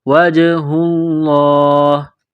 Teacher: جیم ساکن ہے تو یہاں پر قلقلہ کریں گے